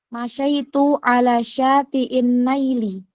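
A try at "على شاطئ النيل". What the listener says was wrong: Nil itu seharusnya ya. Syati'in nil, bukan nail.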